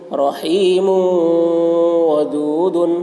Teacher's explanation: تنوین کے بعد حروف یرملون میں سے واو آ رہا ہے، اس لیے میم کو واو سے ملا کر غنہ کے ساتھ پڑھیں گے، اس کو ادغام ناقص کہتے ہیں۔